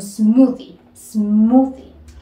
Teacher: en este caso tenemos la presencia de la th y sonaría como una D